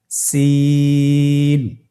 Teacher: জিহ্বার আগা সামনের নিচের দুই দাঁতের পেট ও আগার সঙ্গে লাগিয়ে উচ্চারিত হয় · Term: সিনের মাখরাজ